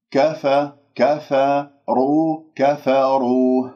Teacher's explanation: الكاف والفاء مرققة والراء مفخمة لأنها مضمومة، فأنت إن قلت كفروا فخمت الكاف والفاء بسبب الراء وهذا خطأ.